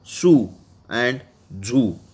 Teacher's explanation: by narrowing the passage of air at the teeth ridge and forcing the air out of the narrow passage, one can produce the s and z sounds that occur at the beginning of the English words su and zu.